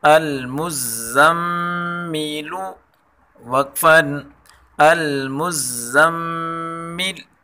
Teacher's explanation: میم زبر زم، میم زیر می، المزمی، لام پیش لو، المزمیلو، لام کے اوپر پیش ہے، پیش کو زیادہ کھینچ کر نہیں پڑھنا ہے